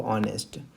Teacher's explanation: स्वर है, vowel sound है। आ की आवाज आ रही है। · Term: एच साइलेंट